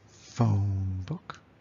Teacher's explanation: That's where the stress comes, is on the first syllable. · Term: trochee